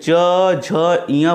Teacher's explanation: वहीं च छ बोलेंगे, अघोष है, कंपन नहीं होगी, लेकिन ज झ इया बोलेंगे तो स्वर तंत्रियों में कंपन होती है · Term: सघोष